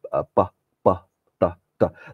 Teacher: So it's unaspirated plosives, stops. · Okay, it could be usually what's written as a D or a B is usually a voiceless plosive. So it's a b, ta, ta.